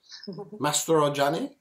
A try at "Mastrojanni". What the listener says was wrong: Very close. The J is silent, so it's Mastrojanni.